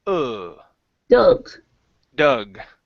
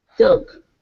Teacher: This Doug. is the schwa sound. Dog is an ah.